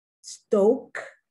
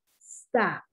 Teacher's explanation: Once again, these words are also minimum pairs because the only difference with the words and their pronunciation is that in one word, the O is long, and in the next word, the O is short